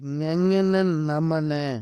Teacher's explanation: இந்த வார்த்தைகளை நீங்க மூக்குல இருந்து தான் உச்சரிக்க முடியும். மூக்கு இல்லாம உங்களால இத உச்சரிக்கவே முடியாது. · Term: மெல்லினம்